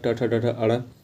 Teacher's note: ट वर्ग मूर्धा से उच्चारित होता है।